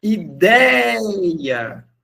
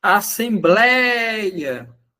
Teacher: Elas têm em comum que a sílaba tônica é um ditongo aberto